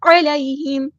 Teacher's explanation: عین کو مستحلق middle throat سے ادا کرنا ہے